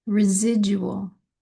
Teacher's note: the D in the middle of a word, and we change that to a J sound, J. So I will try to put the words in the spelling and then the kind of the phonetics of how you might say it.